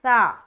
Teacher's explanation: ثا ایک نرمی والا حرف ہے اور بغیر سیٹی کے ادا ہوتا ہے۔ ثا کا مخرج ہے زبان کی نوک اور ثنایا علیہ کا کنارہ۔